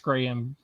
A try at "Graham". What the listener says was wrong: It's Graham. No, it's Graham. There's no Y. There's no Y. The color gray ham. You're saying gray ham. He's not gray ham. He's Graham. Is it gray ham or Graham?